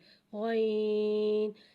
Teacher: غین کی آواز حلق سے موٹی ادا ہوتی ہے